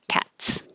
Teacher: t is voiceless so it looks like an s and it sounds like an s